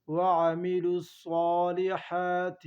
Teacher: صاد کو پر پڑھیں گے مضبوطی کے ساتھ